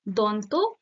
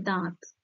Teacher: option খ দন্ত থেকে দাঁত, দন্তান্ন যেটা নাসিক্য ধ্বনি, আর সেটা রূপান্তর হয়েছে দাঁত, অর্থাৎ এই চন্দ্রবিন্দু, অর্থাৎ এই অনুনাসিক ধ্বনিটা যুক্ত হয়েছে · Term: নাসিক্যি ভবনের উদাহরণ